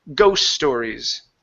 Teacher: The S's are going to connect.